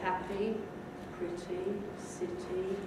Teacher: Nowadays, we say happy, pretty, city, with a more of an E quality, though not with the length of the normal E, the two dots after it that you're familiar with.